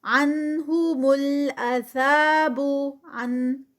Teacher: یہاں پر نون ساکنہ کے فوراً بعد ہا آ گئی ہے، تو یہاں پر اظہار ہوگا، یعنی نون کی ساؤنڈ پڑھی جائے گی